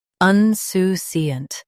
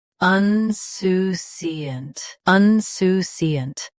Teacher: Stress su. Keep un soft. And finish with siant clearly.